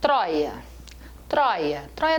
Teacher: tróia tem um ditongo aberto